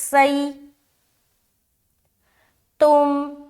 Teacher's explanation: سین میں سیٹی نما آواز آنی چاہیے